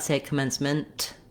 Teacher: I might not say commencement with a strong release of the air for the T in that case just make sure that your n is short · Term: short stopped te